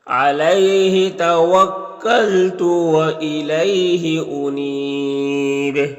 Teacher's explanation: توکلت و الیہ یہاں پر بھی یالین ہے. اور انیب یہاں پر وقف کی صورت میں مد عارض وقفی ہوگا اور با میں قلقلہ ہوگا